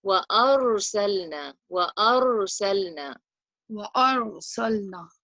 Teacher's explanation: So try and resonate the ra a little bit. Give it a trilling quality, like takreer is called, but don't do it too much.